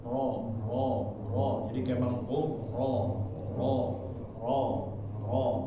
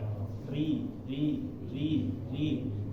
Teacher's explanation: bagian belakangnya seperti ikut naik ya bagian belakang lidah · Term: tebal